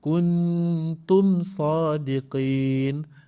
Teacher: Jadi warna biru adalah izhar syafawi. Bermaksud kita kena jelaskan mim tanpa dengung.